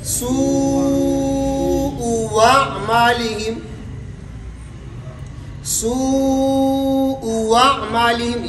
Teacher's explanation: یہاں پر دوسرا حمزہ واو متحرک سے تبدیل ہوگا